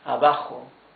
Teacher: Remember that the J, the letter J, is like a much rougher H in English, right? It's not abajo, it's abajo.